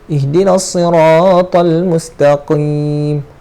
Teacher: Kalau ka guna kalau kita makhrajkan dia menjadi macam huruf kaf, salah. Dia kena mustaqim, pangkal lidah naik. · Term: huruf qaf